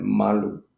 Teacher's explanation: without the emphasis, the sound puts more emphasis on the first vowel and the second vowel is less emphasized